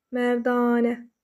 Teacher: mərdanə sözündə ikinci hecada bir dənə uzun tələffüz olunan sait olduğunu gördük